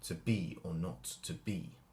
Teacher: the emphasis when read correctly by a Shakespearean actor is on the second syllable every every time